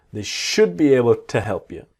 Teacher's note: the to becomes t